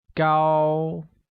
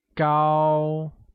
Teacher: carries a high level tone